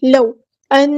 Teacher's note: نون پہ گنا زمانی ہو رہا ہے، ایک الف کے برابر یہاں پہ رکیں گے، 2 حرکات 2 کاؤنٹ رکیں گے.